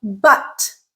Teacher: so it's the stressed version of the schwa okay so it is used in stressed syllables so it's a · more stress it's a longer sound